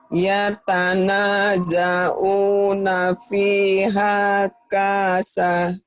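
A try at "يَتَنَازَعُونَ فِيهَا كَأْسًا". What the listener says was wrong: Ka'san. Ada kayak koma di atas. Ka'san.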